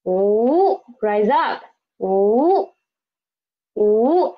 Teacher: Second tone, ooh, rise up